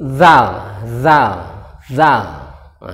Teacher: ada suara berdesis dari ujung lidah bertemu dengan ujung gigi dan anda suara berdesis jadi Zal Zal nah baik setelah itu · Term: huruf dza